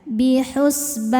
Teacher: Mad tabi'inya alif didahului fathah, kemudian huruf yang disukunkannya nun. Maka baknya panjang, boleh 2 atau 4 atau 6 harokat, asal konsisten dalam sekali baca. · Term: mad arid li sukun